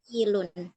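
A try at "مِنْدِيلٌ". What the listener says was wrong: ini harusnya pakai fathah ya, mandilun.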